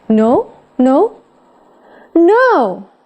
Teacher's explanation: Thế còn nếu mà low rising hay là high rising ấy, thì nó có thể mang chất hỏi lại